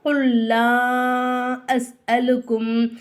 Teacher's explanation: சத்து பெற்ற எழுத்துக்கு முன்னாடி உள்ள எழுத்துக்கு சுக்குன்னு இருந்துச்சுன்னா அந்த எழுத்து நமக்கு என்ன செய்யாது உச்சரிப்புல வராது அப்ப நம்ம எப்படி சொல்லணும் குல்லா அஸ் அலுக்கும் நம்ம எதுக்காக வந்து எல்லா